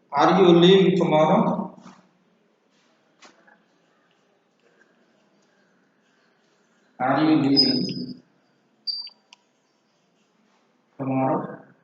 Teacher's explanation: The gradually rising tone